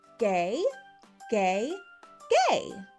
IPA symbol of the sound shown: g